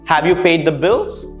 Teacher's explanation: notice how the intonation rose why because it's a yes or no answer and for such situations you let the intonation rise in the